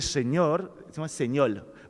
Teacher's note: lo notamos en algunas variantes del español del Caribe que es el lambdacismo el cambio de la r a la l en vez de señor señor por ejemplo en la República Dominicana